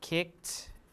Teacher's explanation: because the ed occurs after the k which is a voiceless sound so it's pronounced as a t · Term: assimilation